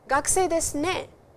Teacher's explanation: So, particle ne is a confirmation seeker and used to solicit agreement from the listener, and it is equivalent to, isn't it?Right, and don't you agree in English? And it always comes in the end. It has a rising intonation as well.